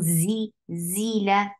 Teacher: Z is very sharp and very buzzy sound.